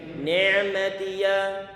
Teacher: Gak sekedar cukup kita ucapkan ni'matiyah, tapi perlu kita alirkan sedikit untuk memberikan sifat bainiyah.